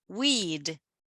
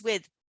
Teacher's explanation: So the length of the vowel sound is going to be longer than in with.